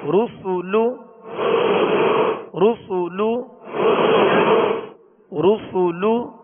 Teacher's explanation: را پر پڑھیں گے، سین کو سیٹی کی آواز میں باریک پڑھیں گے